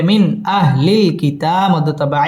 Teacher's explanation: ইজহার গুন্নাহ ছাড়া স্পষ্ট করে পড়তে হবে